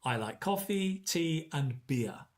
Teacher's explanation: it goes up and up and on the last one it comes down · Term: lists